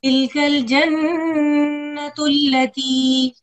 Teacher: نون پہ ہم نے نون مشدد پہ آواز کو ٹھہرایا. اور نورسو یہ حرکت محسوس ہوا تھوڑا سے لمبی ہوئی تھی.